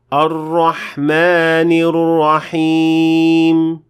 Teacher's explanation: the word Ar-Rahman contains an alif, but that doesn't mean that it can be extended for more than 2 counts. So you have to keep it at 2 counts and not more or less than that.